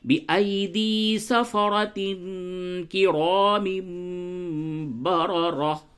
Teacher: کاف حرف اخفا ہے، 15 حروف حرف اخفا ہوتے ہیں جس میں سے کاف بھی ہے، تو یہاں پہ اخفا کریں گے